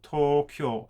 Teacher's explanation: each of these units will get about the same length of time of being pronounced and also they would have the same stress as well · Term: mora